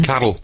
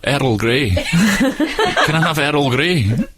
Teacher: with her scottishness she can't say R and L next to each other properly so someone called Carl becomes Carle there's always an extra little syllable so when my mom orders Earl great T it sounds like